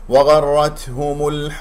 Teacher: هذا خطا، وغ و و وغرتهم، الراء ايضا مفخم لين مفتوحه، التاء هنا ساكنه فيها همس لطيف لا تقلقل لا تبالغ · لا تفخم الواو لان جاورت الغين المفتوحه مفخم مرتبه ثانيه